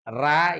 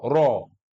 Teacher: kalau ro dibaca fathah atau domah itu tafhim atau tebal dibaca kasrah tqq itu tipis nanti kita juga pelajari kaidahnya tapi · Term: Ro tafhim